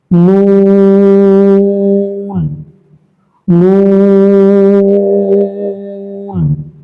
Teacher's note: নুন হরফটা জিহ্বার আগা তার বরাবর উপরে তালুর সাথে লাগিয়ে উচ্চারিত হয় এবং এটা 3 থেকে 4 টান দিয়ে পড়বেন।